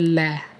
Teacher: इसमें जिह्वा मसूड़ों को छूती है और जो हवा होती है वो जिह्वा के आसपास से ही बाहर निकल जाती है, इसलिए इसको पार्श्विक व्यंजन कहते हैं।